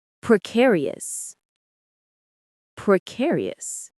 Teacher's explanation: The stress is on care.